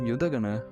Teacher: is pronounced with the stress on the second last syllable